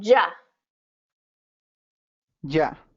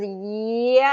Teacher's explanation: it's kind of like you're jumping off of your tongue whereas ye is a little bit more of a Glide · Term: J sound